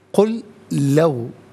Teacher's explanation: قل لو لام ساکن کو لو کی لام کے ساتھ ملائیں گے، اور ناظرین قل لو پڑھیں گے، لام مشدد ہے، جمع کے ساتھ ادا کیا جائے گا۔